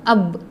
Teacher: با کا مخرج ہے دونوں ہونٹوں کے اندرونی حصے کو ملانا. دونوں ہونٹوں کے اندرونی حصے کو ملانا، جیسے کہ حمزہ با زبر اب.